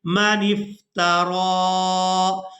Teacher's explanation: اب یہاں پر آپ لوگ یہ یا دیکھ رہے ہیں، یہ یا صرف رسم الخط ہے، اس کو ادا نہیں کیا جائے گا۔ را کو کھڑی زبر کی وجہ سے کھینچ کر ادا کریں گے